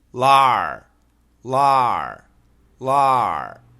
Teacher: When you do the R sound, the tongue is not touching anything. The tip of your tongue touches nothing.